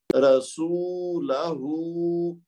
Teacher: रा को भी एक हरकत दी, लाम को भी एक हरकत दी, लेकिन सीन और आखिर में हा जो है इनको दो हरकत देंगे क्योंकि वहां पे मद है।